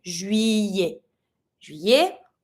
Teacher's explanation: Every time that you have the double L, you're going to be saying y, not the L sound, le, but y.